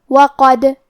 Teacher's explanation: کلمت وقد، یہاں حرف الدال ہے اور اس پہ جزم ہے تو کیونکہ دال حروف القلقلہ میں سے ہے تو ہم یہ حرف کو ہلاتے ہوئے یہ کلمہ کو پڑھیں گے